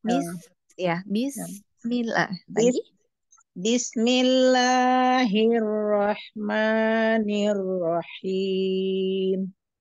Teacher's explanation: tetapi jangan terhentak jadi bis ya Heeh mengalirnya ringan saja ya